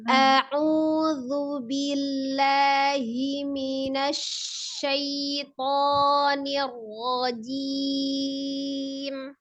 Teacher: A-nya tidak panjang, hati-hati ya. Alif fathah, A pendek satu harokat ya. A, ya dibuka mulutnya ya.